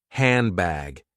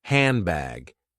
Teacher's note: D disappears, and N is changed into M. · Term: assimilation